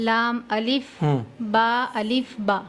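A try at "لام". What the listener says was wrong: ये अलिफ नहीं है, लाम है। अभी मैंने आपको बताया था, अगर इधर जरा सा भी मुड़ा है तो वो अलिफ नहीं रहा, अब लाम बन गया है।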